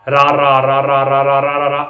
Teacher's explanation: ਜੀਭ ਵਾਰ-ਵਾਰ ਬੁੱਟ ਨੂੰ ਛੂੰਹਦੀ ਹੈ। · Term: ਕਾਂਬਵਾਂ ਵਿਅੰਜਨ